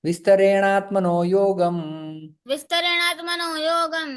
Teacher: यहाँ पर अकह सवर्ण दीर्घ संधि हो जाती है, और यहाँ पर जो है वो विसर्ग का ओ में परिवर्तन हो जाता है